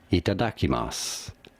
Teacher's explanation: The U at the end is silent, or you can consider it so.